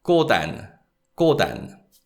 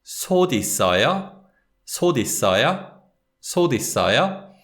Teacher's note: it's the 티귿 sound, unreleased 티귿 sound, that links with the following syllable. So this is read 꼬단, 꼬단.